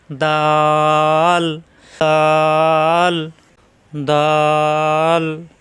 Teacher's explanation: জিহ্বার আগা উপরে দাঁত দুই দাঁতের গোড়ায় লাগিয়ে